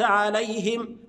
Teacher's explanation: عليهم الهاء مكسوره ونظهر الميم والهاء ف يعني انت طبعا بتقرا لحفص وحفص يقرا بكسر الهاء فما